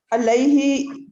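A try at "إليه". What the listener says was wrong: इलैही के अलैही है? इलैही, अलैही ऐन हो गया, अलैही ऐन हो गया, वो भी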